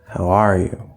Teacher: it's very common without any previous context to stress that are, in which case this how is actually not really going to be stressed.